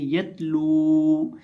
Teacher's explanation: इस लफ्ज़ के अंदर हम लाम को खींच के पढ़ेंगे, लाम को लंबा करके पढ़ेंगे क्योंकि लाम के बाद वाव मद्दा है।